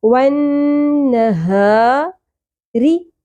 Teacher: اقصی حلق یعنی کہ حلق کے سب سے نچلے حصے سے سینے کی جانب سے ہا ادا ہوگا، اور اس میں سانس کی آواز نہ آئے، ہا کی طرح نہیں پڑھنا۔